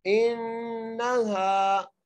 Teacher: हमजा को नून से मिलाते हुए गुन्ना करेंगे